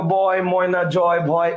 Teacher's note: অ আর এ এটা মিলে হচ্ছে অয় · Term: যৌগিক স্বর ধ্বনি